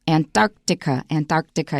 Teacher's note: antarctica you need that long pause after the k or you'll probably say it wrong